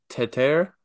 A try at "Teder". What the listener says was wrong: Teder with the D.